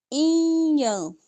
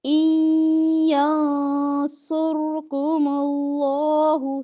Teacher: نون ساکن کے بعد یا آ رہا ہے. ادغام ہوگا غنے کے ساتھ. ان ینصرکم اللہ سر میں سواد موٹا را موٹا.